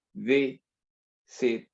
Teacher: Es la primera sílaba que suena con mayor fuerza, no la última.